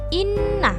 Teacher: huruf nun berharakat tasydid maka dibaca mendengung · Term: bacaan ghunnah